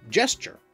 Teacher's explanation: the hard /g/ sound in Latin palatalized into the /dʒ sound before front vowels in French